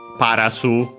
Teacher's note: in Japanese, unlike in English, Paras, we have to add the vowel U